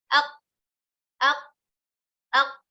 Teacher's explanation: Aina makhrajul qaf? Makhraj qaf pada pangkal lidah dengan langit-langit atas bagian yang lunak atau bagian daging. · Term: huruf qaf